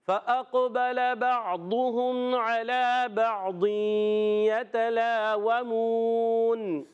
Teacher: واو پر زبر، واو کی ادائیگی ہونٹوں کی گولائی سے. میم واو پیش منہ، واو مدہ ہے، اور آخر میں نون ہو جائے گا ساکن.